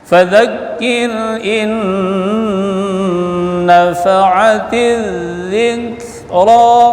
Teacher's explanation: Fadzakir, kir ini dibaca tipis ya, sebelum ra baris kasrah. Fadzakir in nun mati jumpa dengan nun idgham bi gunnah atau ma'agunnah dibaca dengung. In ditahan bacaan supaya dengung.